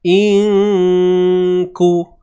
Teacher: Kita dengung 2 harakat, sorokkan bunyi nun ni. Kemudian standby sebut huruf kaf. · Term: ikhfa hakiki